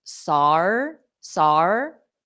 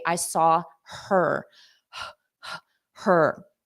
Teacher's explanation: native speakers often drop the H on pronouns just to smooth out pronunciation